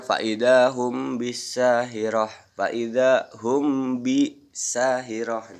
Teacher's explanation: Hukum bacaan ini berlaku ketika mim mati bertemu dengan ba. Dibaca dengan menyamarkan mim mati karena dengungan atau menggunakan guna. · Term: ihfa sapawi